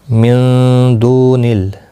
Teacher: نون ساکن کے بعد حرف اقفا کا دال آئے، اخفاء حقیقی ہوگا.